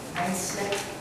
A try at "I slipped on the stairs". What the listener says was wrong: Okay, I slipped. No, it. What you're saying is what you're saying, how you're pronouncing it is that you were sleeping on the stairs. I slipped.